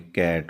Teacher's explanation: ਉਹ soft ਪਲੇਟ ਦੇ ਨਾਲ ਜਿਹੜੀ ਸਾਡੀ ਜੀਭ ਹੈ ਬੈਕ ਵਾਲੇ ਪਾਸੇ ਉਹ ਲੱਗਦੀ ਹੈ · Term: ਵੈਲਾਰਸ